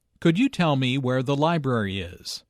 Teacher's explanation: notice that library is stressed here